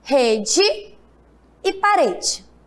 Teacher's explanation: Observe que quando eu falo rede, o E tem som de quê? De I. E parede, o E também tem som de I.